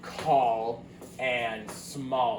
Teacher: it actually sounds more like an O, kind of between an O and a U